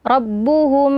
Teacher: maka hukumnya adalah Ikhfa Syafawi jadi dibaca berdengung